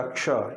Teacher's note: लेकिन जब आप इसका उच्चारण करते हैं ना, तो ये श का उच्चारण इसमें नहीं होता, क्ष, ये छ का उच्चारण प्रतीत होता है क्षत्रिय वाले का, क्ष। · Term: संयुक्त व्यंजन